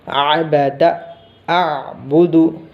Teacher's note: आइन जो है गले के दरमियानी हिस्से से, हलक के दरमियानी हिस्से से पढ़ना